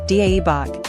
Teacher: The vowel in dae-bak is an open a sound